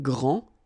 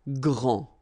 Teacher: Okay, so phonetically, what you can hear is that this first form here for the masculine, grand, so you don't pronounce the final D, will be exactly the same as the plural form for the masculine, grand.